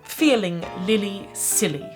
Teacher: when you're thinking about an L sound it's clear it's bright it's light